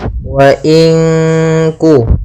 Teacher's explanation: Ya, ada bacaan nun sukun bertemu dengan huruf kaf, maka cara membacanya itu kita samarkan nunnya kepada huruf kaf. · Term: ikhfa